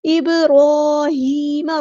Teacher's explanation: را heavy letter ہے، را اور ہا کو برابر لمبا کریں گے